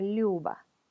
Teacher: la yu palataliza hace más suave la consonante que le presigue. Entonces la L se transforma en algo más suave, Lyuba.